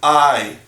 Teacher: And that's when we have the ah sound. And here the ah sound, when we get it connected to the yud, it makes the I sound. So this is I in the sounding.